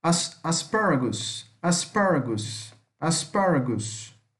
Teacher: Como se fosse um A mais fechado.